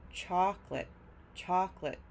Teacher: Chalk is stressed, lit is not